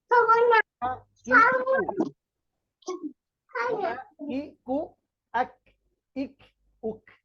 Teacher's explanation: জিহবার গোড়া থেকে একটু আগে বাড়িয়ে তার বরাবর উপরের তালুর সঙ্গে লাগিয়ে কাফ আবার বলছি জিহবার গোড়া থেকে একটু আগে বাড়িয়ে তার বরাবর উপরের